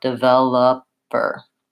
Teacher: I also don't say the O in that word because that's also reduced so I say a schwa